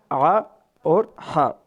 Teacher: عین کا جو مخرج ہے وہ گلے کے درمیانی حصے سے ادا ہوتا ہے عین، اور ہا جو ہے یہ بھی گلے کے درمیانی حصے سے ادا ہوگا